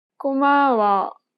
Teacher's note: She kept the same pitch for the first and second syllable, but lowered the tone for the last syllable.